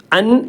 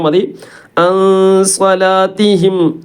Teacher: നൂനിനെ അൻ എന്ന് പറയുമ്പോൾ നാവിന്റെ തലഭാഗം മേലെ ഭാഗത്ത് തട്ടും തട്ടാത്ത അതിന്റെ അടുത്ത് നിൽക്കുന്ന ഒരു അവസ്ഥ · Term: ഇഹ്ഫാ